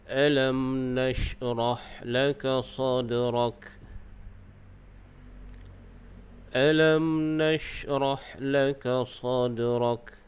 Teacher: sekiranya di atas mim itu ada tanda sukun, maka dibaca dengan hukum izhar syafawi, yakni kita nyatakan ataupun jelaskan bunyi mim mati